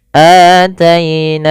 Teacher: pada lafal ataina di sini hanya dipanjangkan 2 harokat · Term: mad badal